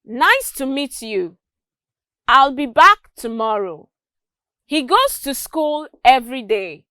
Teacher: you would notice that there was a fall at the end of each of the sentences i made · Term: falling intonation